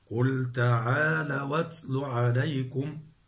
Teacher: أصلها تعالوا أتلوا، تعالوا، واو ساكنة مفتوح ما قبلها، إذن هي حرف لين وبعدها الهمز مفتوح، فنحرك الواو الساكنة اللينة بحركة الهمز وهي الفتح بعد أن نحذف الهمز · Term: النقل